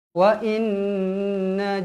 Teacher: Nun yang bersabdu hukumnya wajibul gunah wajib dibaca dengung dua harakat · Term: wajibul gunnah